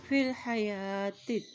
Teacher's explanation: فی الحا زبر ہا، فی الحا، یا کھڑی زبر یا کے پر کھڑی زبر ہے تو اس کو ایک حرکت لمبا ادا کریں گے